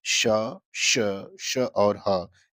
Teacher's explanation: इनके उच्चारण में वायु मुख से घर्षण के साथ बाहर की तरफ निकलती है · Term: ऊष्म व्यंजन